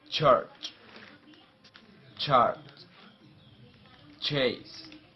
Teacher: the consonant is voiceless post alveolar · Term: affricate